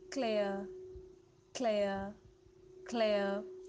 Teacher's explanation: After A, the R would be silent. EA would sound as A.